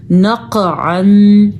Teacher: ایک تو قاف کو پر کر کے پڑھنا ہے کیونکہ حروف مستعلیہ میں شامل ہے. دوسرا قاف پہ ایک جھٹکا پیدا ہوگا کیونکہ حروف قلقلہ میں بھی قاف شامل ہے.